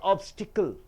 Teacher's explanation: 3 beatings are there. Being a noun, you have to stress the first syllable.